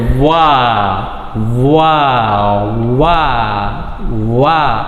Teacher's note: ಸೊ ಇದರ ಒಂದು articulation, point of articulation ನೋಡೋದಾದರೆ ಅಥವಾ ಪ್ಲೇಸ್ ಆಫ್ ಆರ್ಟಿಕ್ಯುಲೇಷನ್ ನೋಡೋದಾದರೆ, the lips ಆರ್ closely rounded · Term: ಸೆಮಿ ಓವೆಲ್